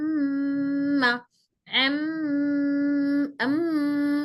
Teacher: अम्मा, एम, ये जो घूम रहा है वो गुन्ना है। जो आवाज नाक में घूम रही है वो गुन्ना है, मीम गुन्ना नहीं है। · दोनों होठों की खुश्की मिलने से ही मीम अदा होता है। अम्मा जब बोल रहे हैं हम, तो डायरेक्ट सिर्फ होठों के कांटेक्ट नहीं हो रहा है इसमें, बल्कि आवाज नाक में घूम रही, ये फोकस कर रहे हैं।